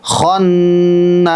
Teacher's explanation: খন ওয়াজিব গুন্না আছে, আর নাস এখানে 3 আলিফ টান আছে।